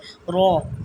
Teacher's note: زبان کے کنارے کی پشت جب صرف 2 دانتوں یعنی ثنایا اور رباعی کے مسوڑوں سے لگے اس سے رو ادا ہوتی ہے۔ تو رو کا تلفظ ادا ہوتا ہے، واضح رہے پشت زبان کا سرا کام کرتا ہے۔